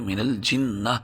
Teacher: جیم کو ذرا شدت کے ساتھ پڑھیں گے، من الجنتی والناس۔ اگر ہم من الجنہ پر وقف کریں تو گول تا ہونے کی وجہ سے ہا آخر میں پیدا ہوگی